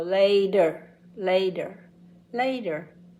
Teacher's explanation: a t in the middle of two vowel sounds often sounds like a d instead of a t